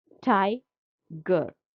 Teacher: Tie is stressed, G is unstressed. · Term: trochaic